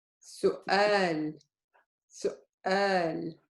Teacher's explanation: In the middle, the waw, if the waw is a carrier, it gives it a short oo sound. This is not a waw anymore.